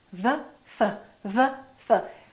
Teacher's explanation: V, F, V, F. The position of the lips is the same, except one is voiced and one is voiceless. One uses the vocal cords and one doesn't.